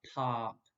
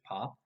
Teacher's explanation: the word pop in english has an o but it's pronounced ah